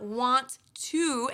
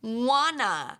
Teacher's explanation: so it's not want to anymore it's wanna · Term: connected speech